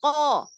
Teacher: huruf qafnya benar-benar nggak ada aliran nafas. Jadi jangan ko, bukan gitu.